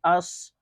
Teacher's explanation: تھوڑا صاد کو موٹا کر کے پڑھیں گے